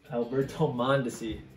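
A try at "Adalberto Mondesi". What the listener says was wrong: That's not Alberto. There's an AD in front of that.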